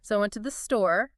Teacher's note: you often let your pitch drift up slightly at the end. So I went to the store, rising pitch. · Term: Rising pitch for continuation